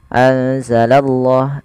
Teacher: kita menebalkan pada lafal Allahnya. Karena di sini lafzul jalalah yang didahului dengan huruf fathah atau dhammah, maka dia akan ditebalkan huruf Allahnya.